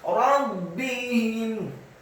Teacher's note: Kata rabbihim, ro-nya dibaca tafkhim, fathah 1 harokat, ba-nya ditasydidkan, kasrah 1 harokat, ha-nya dibaca tafkhim tebal, kasrah 1 harokat, dan mimnya dibaca sukun.